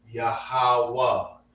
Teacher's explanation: So you got yahwa with a ha at the end. Now the last two words connect. You don't have to say the ha at the end.